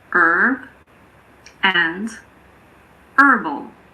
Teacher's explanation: In American English, the H in the words herb and herbal also aren't pronounced.